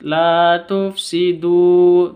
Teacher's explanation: La panjang 2 harokat, la tufsidu, du panjang 2 harokat.